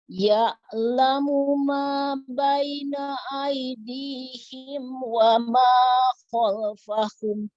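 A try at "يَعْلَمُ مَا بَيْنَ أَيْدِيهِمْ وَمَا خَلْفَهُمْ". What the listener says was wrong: Ainnya kurang menekan, Bu. Ya'lamu ma.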